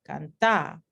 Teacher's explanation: tenemos aquí la a con pronunciación más larga